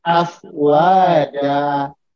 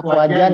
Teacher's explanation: Karena dia berada di akhir ayat, maka meskipun dia fathatain, maka dia dibaca dengan cara seperti membaca mat tobi'i, dipanjangkan 2 harokat. Afwaja. Jadi jangan dibaca afwajan ya. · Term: mat iwat